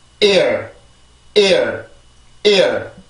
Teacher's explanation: 앞에 있는 모음에서 성대를 긴장을 시키고 뒤에 있는 소리는 흔적만 남기는 거예요. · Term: 강세